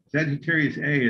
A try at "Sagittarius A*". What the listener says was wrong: Well, Sagittarius A star. A star. It's an asterisk, so you pronounce it A star.